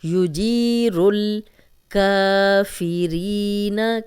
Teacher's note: کا کاف پہ کھڑی زبر ہے، 2 حرکات لمبا کریں گے۔ فی ری، فی ری، ری یائے مدہ ہے، جزم والی یا، پیچھے را پہ زیر، 2 حرکات لمبا کریں گے، نون کے زبر کو لمبا ہونے سے بچائیں گے۔